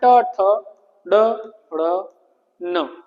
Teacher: ट वर्ग कहां से? मूर्घन्य से।